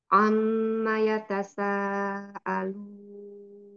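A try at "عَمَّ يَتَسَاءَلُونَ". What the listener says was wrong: tasaalunnya bagus ainnya masih keangkat di awal-awal sih Umi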